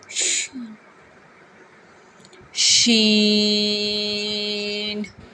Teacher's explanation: زبان کا درمیان اور تالو کے درمیان سے ادا ہوگا